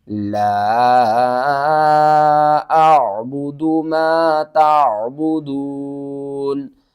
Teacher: اس لا کو ہم نے 3 الف کے برابر کھینچنا ہے، چھوٹی مد ہے، مد منفصل۔